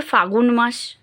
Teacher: ফাল্গুন মাস কে বলে ফাগুন মাস ল টা কোথায় চলে গেল ভ্যানিশ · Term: মধ্য ব্যঞ্জন লোপ